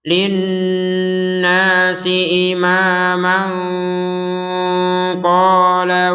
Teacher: Kalau bertemu dengan huruf qaf, maka kita membacanya dengan samar disertai sedikit dengung.